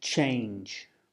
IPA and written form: tʆeɪndʒ (change)